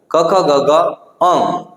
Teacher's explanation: કંઠ એટલે ગળું મિત્રો તો કે જે વર્ણોના ઉચ્ચારણમાં જીભનું મૂળ જીભનો મૂળ ભાગ જે છે કોમળ તાલુને સ્પર્શે એટલે કોમળ તાળું ને સ્પર્શ કરી કંઠ માંથી અવાજ ઉત્પન્ન કરે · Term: કંઠ્ય વર્ણો